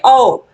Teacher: आपके कंठ का भी प्रयोग हो रहा है और आपके होठों का भी प्रयोग हो रहा है · आप देखोगे आपके ओष्ठ तो आ ही रहे हैं, आपके गले से भी आवाज आ रही है, यानी कि आपके गले से भी स्वर निकल रहा है, तो इसीलिए आपके कंठ का भी प्रयोग हो रहा है और आपके ओठों का भी प्रयोग हो रहा है। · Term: कंठ ओट, कंठ ओष्ठ